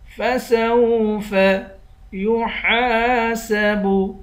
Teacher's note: ہا کے بعد الف ہے، الف حروف مدہ ہے، اس کو 1 الف کی مقدار کھینچ کر پڑھیں گے